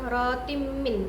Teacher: Di sini adanya kasroh bertemu dengan mim, hukumnya idgham biguna, cara bacanya itu masuk dengan dengung